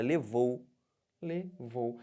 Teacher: tô descendo Então eu tenho um ditongo decrescente · Agora eu estou partindo de quem? Do O para o U. O que está acontecendo? Estou descendo. Então, eu tenho um ditongo decrescente.